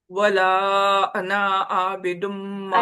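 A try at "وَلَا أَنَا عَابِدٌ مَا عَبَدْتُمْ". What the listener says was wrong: انا کا الف نہیں پڑھا جاتا، انا نہیں ہوگا، انا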